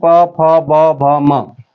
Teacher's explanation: और प वर्ग ओष्ठ से, ये बोले जाते हैं।